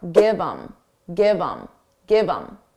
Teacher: Get rid of the H and it will sound like im. But you can combine it to the word before.